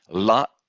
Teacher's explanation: La is dental, because we are touching with our tip of the tongue the back of our frontal teeth.